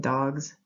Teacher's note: the z is after voice sounds like in dogs